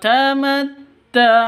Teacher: nun mati bertemu dengan ta cara bacanya samar didengungkan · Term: ikhfa